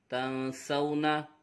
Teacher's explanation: نون ساکن کے بعد حرف اخفا میں سے سین آ رہا ہے، اخفا ہوگا، غنہ کر کے پڑھیں گے۔